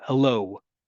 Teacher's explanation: What's that last sound in the word hello? That's a W. That's not an O.